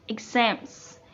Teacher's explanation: It has stressed syllables in the end.